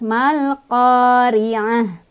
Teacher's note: Malqari, ri-nya ro-nya ya, ro tarkik lagi ya atau ro tipis karena ro-nya berbaris kasroh jadi otomatis ya itu mah. Cara bacanya ditipiskan, tipis tuh dengan mulut yang agak mundur dan sedikit meringis.